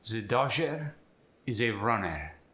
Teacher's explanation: if the r comes at the end of the word you're going to drop it